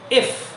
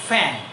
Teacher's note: ইফ উপরের দাঁতের মাড়ি নিচের ঠোঁটের উপরে লাগবে